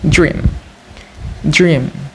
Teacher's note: It consists of three consonant sounds, either voice alveolar stop da, voice palato-alveolar approximant ra, and voice bilabial nasal ma, and one vowel sound as high front unrounded vowel e.